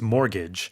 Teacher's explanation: pronouncing this word, the T is silent there, right? So it's mortgage.